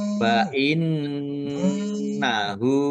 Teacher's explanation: Fa innahu nun tasdid bacaan ghunah ya ditahan biar tampak mendengung. Domir ha domah terbalik mad silah qosirah dibaca panjang dua harakat sama dengan mad thobi'i.